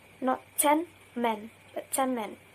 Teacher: It assimilates, the n assimilates to m